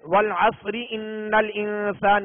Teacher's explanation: اور اگر وقف نہیں کریں گے والعصر ان الانسان یوں پڑھیں گے تو را کی پھر اپنی اصلی کیفیت کو دیکھیں گے، اصلی حالت کو دیکھیں گے کہ را کے نیچے زیر ہے، لہذا اس را کو باریک پڑھیں گے